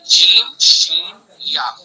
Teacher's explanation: یا متحرک اور یا لین کا مخرج ہے زبان کا بیچ اور اس کے مقابل اوپر کا تعلق، یعنی جیم شین یا تینوں کا مخرج ایک ہے، تینوں کو ایک جگہ سے نکالا جاتا ہے، جیم شین یا، زبان کا بیچ اور اس کے مقابل اوپر کا تعلق